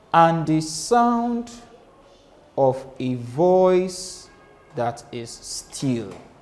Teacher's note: we now have two unstressed syllables followed by one stressed syllable. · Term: anapestic meter